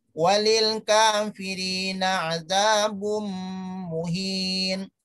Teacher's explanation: Pengucapannya seakan-akan ditasjidkan. Ya, di sini mimnya seakan-akan ada tasjid. Walaupun tidak ada, ya. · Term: idgham